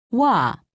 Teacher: imagine that you are trying to say oo and ah quickly be sure not to pause in between pronouncing the two sounds